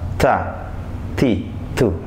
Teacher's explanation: ujung lidah tidak menyentuh ke langit-langit mulut, akan tetapi menyentuh ke langit, ujung lidah menyentuh ke pangkal dua gigi depan atas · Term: huruf ta